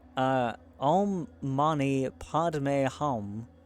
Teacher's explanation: 2 long stressed syllables between 2 pauses